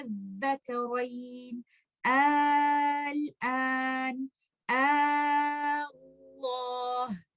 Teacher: we change Hamzatul Wasl into a mad letter, and this mad letter will be stretched 6 counts